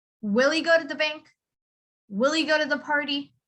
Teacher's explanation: when you have the word he, you would say it as e. You just kind of pronounce the letter e instead of he.